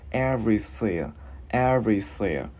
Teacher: mình đưa lưỡi qua giữa hai răng mình thổi hơi ha